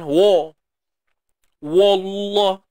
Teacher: Kalimah Allah tebal. Wa jangan tebal.